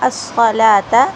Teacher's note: صاد کو موٹا پر کر کے پڑھیں گے.